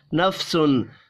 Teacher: تنوین کے بعد حروف حلقی ہے، یہاں پر اظہار حلقی ہوگا، غنہ نہیں ہوگا